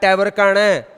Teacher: ट वर्ग का ण मूर्धा और नासिका